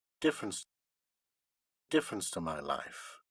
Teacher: there is a step up in pitch and after that there is a downward pitch movement from difference to the end of the sentence which seems like a fall indeed the first syllable of difference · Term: nucleus